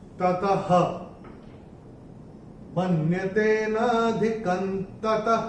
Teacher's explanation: ये जो विसर्ग आ रहा है त के बाद दूसरे चरण की समाप्ति पे आ रहा है, तो उसका उच्चारण केवल और केवल ह ही होगा।